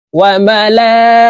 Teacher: ঈমানে মুফাসসাল: আমানতু বিল্লাহি, আমানতু বিল্লাহি ওয়া মালাইকাতিহি ওয়া এই লামে 4 আলিফ টান হবে, মদের হরফের উপরে মোটা চিহ্ন, বামে হামজা, মধ্যে মুত্তাসিল, 4 আলিফ টানিয়া পড়িতে হয়